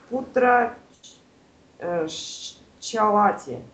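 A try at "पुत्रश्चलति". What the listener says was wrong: Так, шчалати или чалати? Одно дело, что оно написано слитно. Вы же сейчас, я же вас прошу, чтобы вы поняли, где конец одного слова, начало другого. То есть путраш. Чалати.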